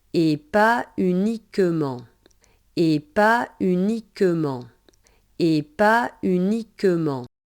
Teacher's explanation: uniquement in French does not start with a Y sound